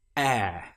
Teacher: it starts like the letter E or the sound E, the short vowel sound which we learned such as in bet. But here we stretch it out and make it longer. So we get the sound air.